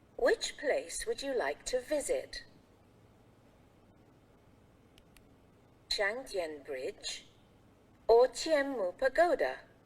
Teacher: we will use the rising intonation for the first choice. Then, we will use the falling intonation for the last choice. Trong câu có nhiều sự lựa chọn, chúng ta sẽ lên giọng ở những sự lựa chọn đầu tiên và chúng ta sẽ xuống giọng ở sự lựa chọn cuối nhé.